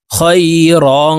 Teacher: তানউইনের পরে ইকফার হরফ কাফ আসছে, এই কারণে এই র কে নাকের ভিতরে লুকাইয়া গুন্নার সহিত পড়ব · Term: ইকফা গুন্না